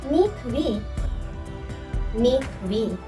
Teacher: both the syllables in this foot are accented. For example, this is an easy one.